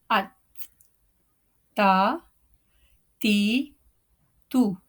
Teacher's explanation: You can see in the picture the Rasul lisan is touching the gum line of the Sanaya Ulia and the back portion of the tongue is not raised, even flat